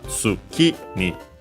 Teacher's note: Here we can hear, by the way, the accent of tsuki because of the following particle ni, tsuki ni, low, high, low.